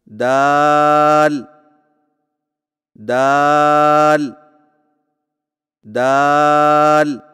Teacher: دال کی ادائیگی میں زبان کی نوک کو سامنے والے اوپر کے دو دانتوں کی جڑ سے لگا کر باریک آواز میں پڑھیں، یعنی دال دال دال۔